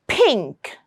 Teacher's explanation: the air will have to come out with a burst of air